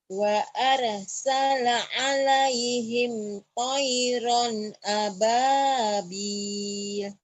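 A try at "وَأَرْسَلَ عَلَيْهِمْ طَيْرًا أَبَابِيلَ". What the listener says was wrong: salahnya di mana? Bil, panjangin. Wa arsala alaihim tayran ababil gitu ya.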